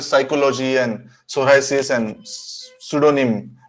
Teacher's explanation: We don't even make attempt to even slightly pronounce the p